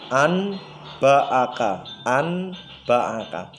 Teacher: merubah atau menukar penuturan bunyi huruf nun atau tanwin dengan huruf mim yang disamarkan serta dengan dengung · Kalau ada nun mati bertemu ba berarti iqlab. Cara membacanya nun matinya berubah menjadi mim itu.